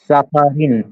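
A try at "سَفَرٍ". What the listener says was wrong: রটা হচ্ছে কোন হবে? র নিচে যে জের আছে একদম পাতলা করে, সাফারিন। রিন মোটা না। র যখন জের হয় তখন রটা চিকুন হয়, বাকি সময় মোটা হয়। সাফারিন, সাধারণ ভাবে একদম সাফারিন।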